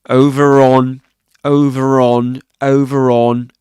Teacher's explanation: So in this case in this accent um they would pronounce the r sound. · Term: linking R